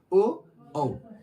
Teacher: ओ बोलते तो आ रहा है कंठे से, लेकिन उसमें ओष्ठ का प्रयोग हो रहा है। ओ देखिए होंठ थोड़ा सा अब बाहर आ रहा है, ओ। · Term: कंठोष्ठ